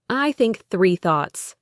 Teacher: Then, you blow air through the small gap. For the unvoiced sound in think, it's just air.